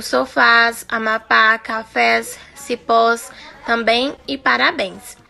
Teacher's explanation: Acentue-se as palavras oxítonas. A tonicidade recai sobre a última sílaba terminadas em as, es, os, em e ens.